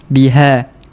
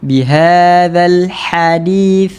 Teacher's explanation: bila kita sebut huruf ha, tak ada pressure, tiada tekanan